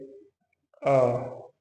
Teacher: अध विवृत है कि इसमें आधा मुख द्वार खुले